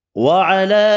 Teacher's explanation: چھوٹی مد ہے، 3 الف کی مقدار میں کھینچ کر پڑھیں گے